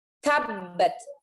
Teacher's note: Jadi wajar kalau kita membaca ya, atau syekh-syekhnya Arab membaca ta itu dengan nafas ya